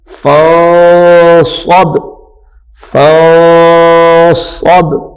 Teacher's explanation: نون ساکن کو چھپا دینا ہے، اخفاء کرنا ہے